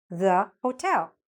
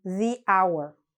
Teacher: thuh before a consonant sound, and thee before a vowel sound